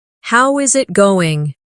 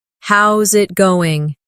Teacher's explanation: The is disappears and the final G in going often softens. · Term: connected speech